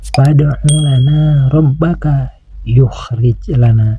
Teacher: Dan selanjutnya ada huruf ro yang berbaris fathah. Huruf ro yang berbaris fathah ini harus dibaca tafhim, yaitu harus dibaca tebal, karena huruf ro ini berbaris fathah.